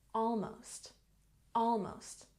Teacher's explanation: almost has stress on the first syllable